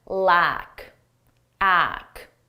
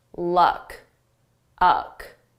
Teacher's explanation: Notice with lack, we have a longer sound, a more open mouth position. And luck, my mouth is closed because this is more of a schwa sound in my throat.